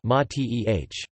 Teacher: A traditional drink of Argentina is an infusion called mate in Spanish, mate, with the accent on the first syllable